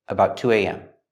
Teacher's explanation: The T in about is a stop T, but it links to the T in to.